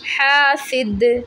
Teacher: दाल को वक्फ़ में साकिन कर देंगे और यहाँ पे कलकला होगा